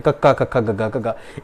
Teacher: ਇਹਨਾਂ ਦੇ ਉਚਾਰਨ ਸਮੇਂ ਜਿਹੜੀ ਜੀਭ ਹੈ ਨਾ, ਉਹਦਾ ਜਿਹੜਾ ਜੀਭ ਦਾ ਪਿਛਲਾ ਹਿੱਸਾ ਹੁੰਦਾ ਹੈ, ਉਹ ਸਪਰਸ਼ ਕਰਦਾ ਕਿਹਦੇ ਨਾਲ ਜੀ? ਕੋਮਲ ਤਾਲਵੇ ਨਾਲ,